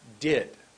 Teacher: my tongue goes up behind my teeth for did you see above my teeth did that that's one word at